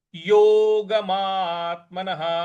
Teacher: यहां जो आधा त है उस पर भी हमको आघात देना है